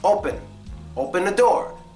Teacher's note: The E gets the schwa sound.